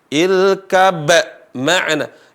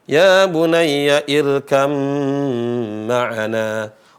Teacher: Huruf pertamanya adalah ba, huruf keduanya adalah mim. Maka huruf pertamanya lebur, enggak ada, hilang, dan menjadilah huruf keduanya bertasdid. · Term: idgham